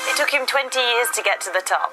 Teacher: the two t sounds join together to create one slightly stronger t. So, it takes two becomes it takes two. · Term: twinning or gemination